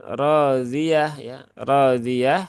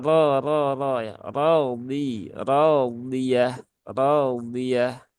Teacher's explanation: Ro yang berharokat fathah dia memiliki sifat aridah yaitu sifat tafkhim, yaitu hurufnya dibaca tebal dengan tebal.